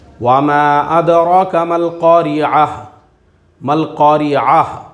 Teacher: ہم وہ پوری کا پوری گول تا کو ہائے ساکینہ سے بدل کر پڑھیں گے